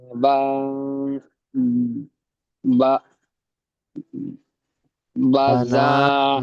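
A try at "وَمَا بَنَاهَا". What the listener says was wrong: বানাহা, নুন ওটা বানাহা।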